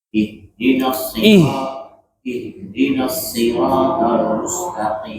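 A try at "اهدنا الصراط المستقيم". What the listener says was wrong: jangan mustaqim, berlebihan. Mustaqim, tapi sedikit aja. Mustaqim. Tadi jangan mustaqim berlebihan, hanya mustaqim.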